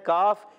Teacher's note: اور کاف زبان کی جڑ تالو کا سخت حصہ